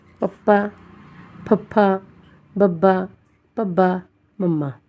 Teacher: ਬੁੱਲ ਜੁੜ ਜਾਣ ਦੋ ਹੋਠੀ ਵਿਅੰਜਨ ਅਖਵਾਉਂਦੇ ਹਨ